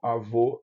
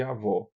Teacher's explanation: Sons vocálicos que se diferenciam por uma propriedade articulatória como o, que se distinguem apenas em altura. O primeiro é alto, o segundo é baixo, como avô e avó.